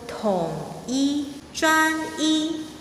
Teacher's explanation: When E is used at the end of a word or a sentence, it keeps its original tone, the first tone.